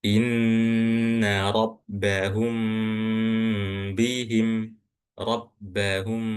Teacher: Jadi didengungkan dan ditahan tahannya juga agak lama ya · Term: ikhfa syafawi